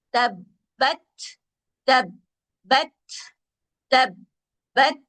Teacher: बाकी आवाज को इसलिए पढ़ेंगे ऐसा है कि बा मुशद्दद है। बा के अंदर खूबी है कि इसकी आवाज बंद हो जाती है